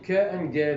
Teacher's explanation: In ke and ge, the back of the tongue touches the soft palate.